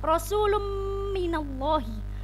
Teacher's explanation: tanwin bertemu dengan mim, maka disebut dengan bacaan idgham bi gunnah. Idgham bi gunnah hurufnya ada 4, yaitu ya, wawu, mim, nun.